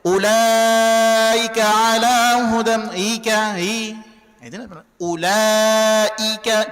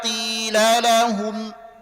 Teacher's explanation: tegaskan saja penyebutan hamzah karena dia mesti tahqiq